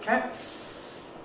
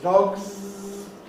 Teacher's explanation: In cat is voiceless. Voiceless s is what we add. Z is the same sound but voiced.